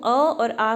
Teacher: अ और आ का जो उच्चारण स्थान है वो कंठ है